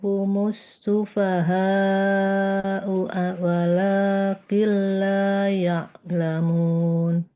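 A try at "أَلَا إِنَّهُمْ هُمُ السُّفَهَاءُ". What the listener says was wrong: Coba sekali lagi ala innahum, haknya maksimalkan 5 harokat, lebih panjang sedikit.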